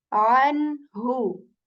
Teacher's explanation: We keep the noon sound as it is. We do not hide it. We do not conceal it. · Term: noon sakin